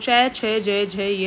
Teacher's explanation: ये स्पर्श संघर्षी बोलते हैं। थोड़ा सा संघर्ष लगता है इसको बोलने में।